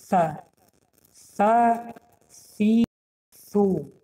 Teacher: سری زبان را در بین دندان ها میگذاریم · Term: حرف ث